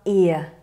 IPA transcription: ɪə